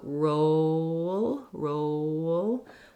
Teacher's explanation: The O in American English is a diphthong. We glide from the tense round O to close the jaw and get a little more lax on the O. If you hold it longer, you'll probably have the correct sound.